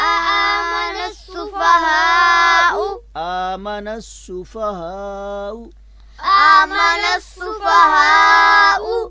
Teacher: وہ الف لام صرف لکھنے میں آ رہا ہے مگر پڑھنے میں نہیں آئے گا